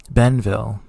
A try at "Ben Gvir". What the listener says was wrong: Ben Gvir. Gvir. No, don't say. No, not Vil and not Goela de Vil. Gvir.